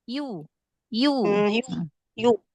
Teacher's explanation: makhrajnya tengah lidah, ya. Nempel ke langit-langit tengah kan, you. Jadi ada huruf y-nya, you. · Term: huruf iya